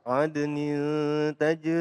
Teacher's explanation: Nah, di sini qolqolah. Dan kemudian nin tanwin bertemu dengan tak dibaca ikhfa, pemirsa.